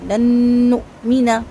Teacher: لن نؤمن میں نون ساکن کے بعد نون آ رہا ہے، یہاں پر ادغام مال غنہ ہوگا، دو حرکت تک غنہ کریں گے، حمزہ پہ جھٹکا آئے گا اور نون کا زبر لمبا نہیں کریں گے